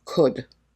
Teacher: Notice the pronunciation of this word, could. The L is silent.